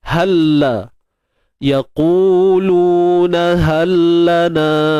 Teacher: Kita masukkan bunyi lam ke dalam huruf lam yang hidup ni. Dan sudah tentu dibaca dengan kamil lah, sempurna. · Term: idgham mutamathilain